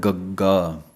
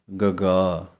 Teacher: ਵਾਂਗ ਹੀ ਹੈ ਖਖੇ ਪੈਰ ਬਿੰਦੀ ਦੇ ਖਖਾ ਦੀ ਇਹਦਾ ਉਚਾਰਨ ਗਗੇ ਪੈਰ ਬਿੰਦੀ ਦਾ ਉਚਾਰਨ ਵੀ ਜੀਭ ਦਾ ਪਿਛਲਾ ਹਿੱਸਾ ਹੀ ਉਪਰਨੂੰ ਜਾਣਾ ਹੈ ਤਾਲੂ